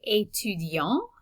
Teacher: notice that the t is silent at the end and we have a nasal vowel at the end of that word